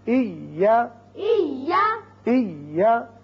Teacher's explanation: یہ یا ساکن ہے پہلے، دوسرا متحرک ہے، لیکن جب ہم پڑھیں گے تو یہاں شدت کے ساتھ جب دونوں کو ملایا تو شدت پیدا ہوئی